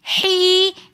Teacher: حین کے اندر یا مدہ ہونے کی وجہ سے ہم نے حی ایک الف کی مقدار کھینچ کر پڑھا. یا مدہ کے بعد پھر آگے نون ساکن آ رہا ہے تو ہم نے وقف کی حالت میں اس کو دوبارہ تھوڑا سا زیادہ کھینچ کر پڑھنا ہے الہین.